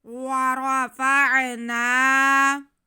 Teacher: را پہ زبر اس لیے را کو موٹا پڑا جائے گا